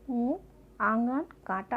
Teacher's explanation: अंग को अनुनासिक कहते हैं। इसका उच्चारण नाक और गले दोनों से होता है। इसका मात्रा चंद्रबिंदु होता है, जैसे ऊँ, आंगन, कांटा आदि।